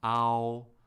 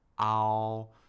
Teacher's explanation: The stress occurs more on the first vowel of the pair. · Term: descending diphthong